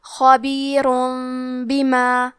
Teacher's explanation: کلمت خبیرن کے آخری میں را پہ تنوین پیش ہے، پھر حرف الباء آتا ہے کلمت بما، با حروف القلب میں سے ہے، قلب کا معنی ہے بدل دینا، تو ہم تنوین کو ہلکی میم میں بدل کے اور غنہ کے ساتھ یہ حکم کو ادا کریں گے۔